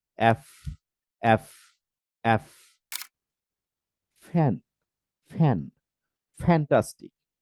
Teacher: নিচের ঠোট আর উপরের দাঁত একসাথে লাগিয়ে